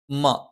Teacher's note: മ രണ്ട് ചുണ്ടും തുല്യമായി അടച്ചു വെക്കണം.